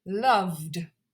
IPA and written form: lʌvd (loved)